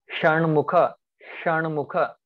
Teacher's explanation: Sh is murdhanya. Now I assume that you know the place in Sanskrit name. Murdhanya means cerebral.